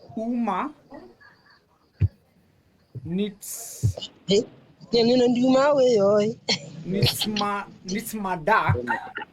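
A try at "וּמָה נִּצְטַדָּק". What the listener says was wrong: Well done. Very nicely done.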